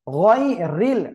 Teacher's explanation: র নিচে জের চিকন করে পড়তে হবে